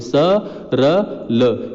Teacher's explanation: वत्सर्य वर्ण होते हैं स र ल, इनका उच्चारण जीभ और मसूड़ों के स्पर्श से होता है। ये सरल याद रखिए, वत्सर्य होते हैं।